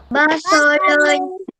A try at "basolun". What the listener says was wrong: Basolun. Dengan so, jangan baca dengan sa. Ni bukan sa, ni so. Basolun. Basolun. Basolun. Basolun. Basolun.